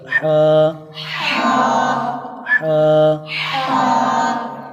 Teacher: ہا حلق کے درمیان والے حصے سے ادا ہوتا ہے